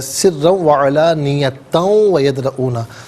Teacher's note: تا پر دو زبر کی جو تنوین ہے اسے واو کے ساتھ ملا کر واو کی آواز کو غننے کے ساتھ ادا کریں گے ملا کر پڑھنے کی صورت میں۔